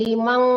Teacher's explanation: nun ketemu kaf itu dengung ya, Bu. Nama hukumnya ikhfa hakiki. Jadi limang didengungkan, jangan liman ya. Kalau liman Ibu jelaskan itu namanya izhar gitu.